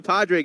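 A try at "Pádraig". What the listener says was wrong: Well, it's definitely not Padraig, and it's not The D is silent. It's Padraig Harrington. Well, I can guarantee you that's wrong as an Irishman. Padraig Harrington. Padraig.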